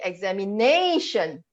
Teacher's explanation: You stress the syllable just before shen.